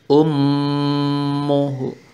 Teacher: gunnah, bacaan didengungkan, yakni pada lafadz ummuhu, pada huruf mim yang bersyaddah, bertasdid, sama seperti nun sukun sebelumnya, menjadi ummuhu.